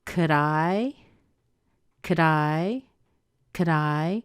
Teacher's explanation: the D on could is going to push over into the I